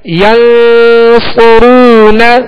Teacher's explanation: یہاں نون ساکن کے بعد صاد ہے، صاد حروف ہے اخفا میں سے، لہذا یہاں پر اخفا کریں گے، غنہ کریں گے، اور صاد کو پر پڑھیں گے، ہونٹوں کو گول کریں گے. صاد پر پیش ہے، آگے واو مدہ ہے، ایک الف کی مقدار کھینچ کر ادا کریں گے. آخر میں نون پر صرف زبر ہے، آواز اور منہ کھول کر بغیر کھینچے ادا کریں گے.